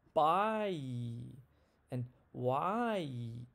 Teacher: my tongue moves from the bottom to the front